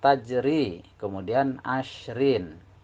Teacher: untuk yang bacaan tipis ini mulut kita harus membentuk suara Ih atau dalam kata lain sebagai pendekatan harus jengir jadi untuk tafkhim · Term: dibaca tarqiq atau tipis